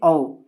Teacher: कंठोष्ठ ध्वनि यानी कि कंठ प्लस ओठ यानी कि ओठ दोनों का उपयोग किया जाता है